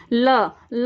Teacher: ल का जब हम उच्चारण कर रहे हैं तो हवा है वो साइड से, जीभ की दोनों साइड से निकल रही है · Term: पार्श्विक